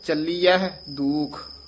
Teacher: ਚਲੀਐ ਨਹੀਂ ਕਹਿ ਦੇਣਾ ਹਾਹ ਵੀ ਉਚਾਰਨ ਕਰਨਾ